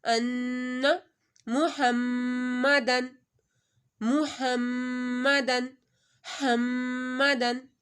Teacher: محمدن، حمدن، دیکھیں میم کے اوپر بھی تشدید آ رہی ہے، نون کے اوپر بھی اور میم کے اوپر بھی غنہ کیا جائے گا